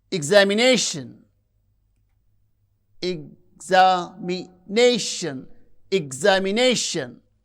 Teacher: You can see the stress syllable is nay that receives primary stress. At the same time the first one a it has full wall quality and the stress is marked with the upper vertical line primary stress and the secondary stress is marked by lower vertical line and functional stress. · You can see the stress syllable is nei, that receives primary stress.